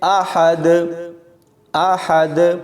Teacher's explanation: حمزہ کو پڑھتے ہوئے آحد یعنی کھینچ دیتے ہیں تو یہاں پر کھینچنا نہیں ہے، آرام سے پڑھیں گے